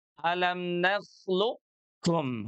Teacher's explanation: Huruf qof-nya dia harus dibaca menebal.